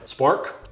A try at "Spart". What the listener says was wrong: Well, there's no K.